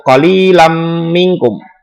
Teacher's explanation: Idgham bi gunnah karena ada fathah tain bertemu dengan huruf mim. Cara membacanya dimasukkan dengan berdengung